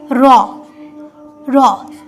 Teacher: যখনই আমরা র উচ্চারণ করছি দেখো আমাদের জীবটা কতটা কাঁপছে র আমাদের জীবটা কিন্তু অনেকবার কাঁপছে আমাদের মুখে জীবটা অনেকবার কেঁপে তবে কিন্তু এটা উচ্চারণ হচ্ছে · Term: কম্পিত বর্ণ